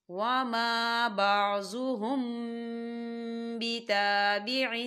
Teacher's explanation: میم ساکن کے بعد با آ رہا ہے، تو یہاں پر اخفا شفوی ہو رہا ہے، تو ہم یہاں غنہ کریں گے. اس کی مقدار 2 سے 3 سیکنڈ ہوگی.